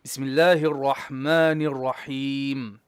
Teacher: Your ra needs tikrar.